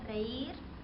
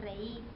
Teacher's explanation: También tenemos a la pérdida de la r